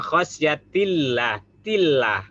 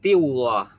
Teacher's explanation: Lafzul jalalah tarkik. Karena sebelum lafaz Allah dia kasroh atau bawah.